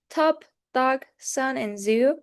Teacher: So my tongue touches my alveolar ridge